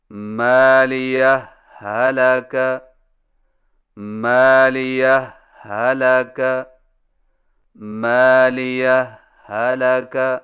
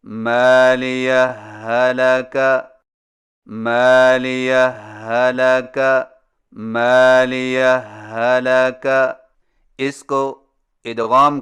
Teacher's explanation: صرف ایک مشدد ہا سے پڑھیں